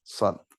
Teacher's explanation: Kemudian dia isti'la. Lidahnya naik. Nah, ini yang bikin jadi tebal, ya. Kemudian idbak. Ya, idbak, lidahnya rapat. Merapat ke langit-langit.